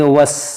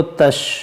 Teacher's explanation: یہ پہلا چھوٹی سین ہے، دوسرا بڑی شین ہے، اس کو پڑھیں گے وس سختی سے اور اس کو تش نرمی سے